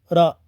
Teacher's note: रा को लुंटित व्यंजन कहते हैं क्योंकि इसमें जीभ की नोक लपेट खाकर ऊपरी मसूड़ों को छूती है।